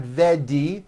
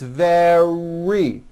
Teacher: In the word very, for example, which is a frequently used word in English, the R occurs in the middle of the word. It's not a D sound.